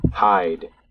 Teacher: We can see that the first formant starts high and then drifts downward.